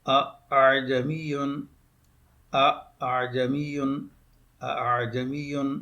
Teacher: پہلا حمزہ جو ہے یہ تو تحقیق سے پڑھا جائے گا، اور دوسرا حمزہ جو ہے وہ تصحیل یعنی نرم کر کے اس کو ادا کریں گے، نرمی سے ادا کریں گے، آسان کریں گے، سائل کریں گے، تو ہو جائے گا اعجمی، اعجمی، اعجمی۔